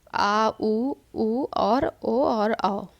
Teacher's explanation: पश्च स्वर वो होते हैं जिन स्वरों के उच्चारण में जिह्वा का पिछला भाग सक्रिय होता है उन्हें पश्च स्वर कहते हैं।